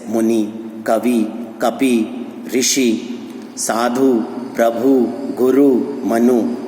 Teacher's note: ई ऊ से समाप्त होने वाले संस्कृत से आए पुल्लिंग शब्द प्रायः ह्रस्व इकार उकार वाले होते हैं, अर्थात इनका जो अंत होता है वो छोटी ई और छोटे ऊ की ध्वनि से होता है